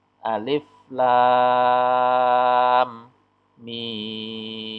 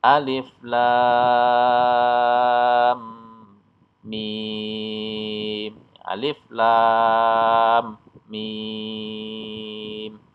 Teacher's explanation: lam dan mim dibaca panjang 6 harakat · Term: mad lazim Harfi musyabbah